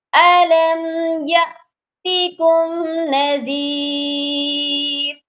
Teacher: اور حمزہ جب ساکن ہوتا ہے تو اس پر ہم نے جھٹکا لازمی دینا ہے، یہاں پر یہ پڑھا جائے گا یاتکم، یاتکم مت پڑھیے گا۔